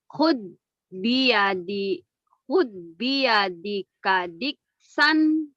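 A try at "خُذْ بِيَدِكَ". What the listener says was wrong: Khudnya agak pecah. Khud. Khud. Khud. Jangan hude. Khud. Zal. Kayak sa. Cedal dikit.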